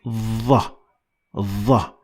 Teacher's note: Your tongue has to be all the way up to the roof of your mouth to produce the proper sound. So instead of saying the, you're going to put your tongue all the way upwards to make it sound like Dha.